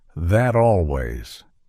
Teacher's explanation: seamless connection where the T at the end of that shifts to a d